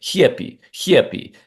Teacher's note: Like if I was doing Russian accent, for example, and I say like happy, happy, and I hear that velar fricative H sound on here, the slide, that yod between the H and the short E sound that I've replaced the short A with.